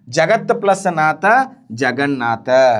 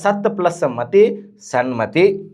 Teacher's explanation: ತ ಇತ್ತಅಂದ್ರೆ ನ ಬರ್ತೈತಿ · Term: ಅನುನಾಸಿಕ